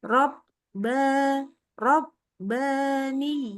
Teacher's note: Huruf ba-nya lebih syiddah ya. Jadi nggak boleh tambahin tawasud kayak mim gitu loh.